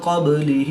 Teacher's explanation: نون ساکن کے بعد قاف حروف اخفا میں سے ہے تو یہاں پر اخفا ہوگا، یعنی غنہ زمانی کر کے پڑھیں گے۔ با حروف کلکلہ میں سے ہے اور جب حروف کلکلہ ساکن ہوں تو ان میں کلکلہ خوب ظاہر ہوگا، اس کو کلکلہ صغریٰ بھی کہتے ہیں۔